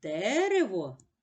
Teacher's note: перший звук е наголошений промовляється чітко а другий звук вимовляється наближено до звука и